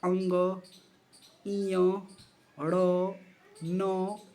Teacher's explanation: जितने पंचम वर्ण होते हैं हर वर्ग के पंचम वर्ण जो होते हैं वो नासिक बोले जाते हैं। ठीक है? नाक से बोले जाते हैं। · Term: नासिक वर्ण